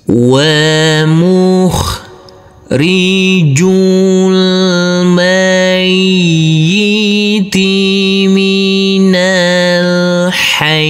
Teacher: Huruf nun kita baca pendek langsung masuk ke huruf lam. Huruf alifnya ini kita anggap tidak ada. Dan huruf ya ini cukup kita tekan dan kita tahan saja dengan dua harakat karena bertasdid.